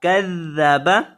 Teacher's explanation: کذب اسے آپ نے کذبا نہیں پڑھنا، کذبا پڑھنا ہے. ذال جو ہے اس میں سیٹی پیدا نہیں کرنی